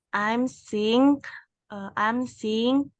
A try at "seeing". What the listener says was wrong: Bukan sing. Kalau kamu bilangnya sing itu artinya Penyanyi kan? Seeing. Jadi I-nya tuh double gini loh cara bacanya. Kayak gini. Seeing.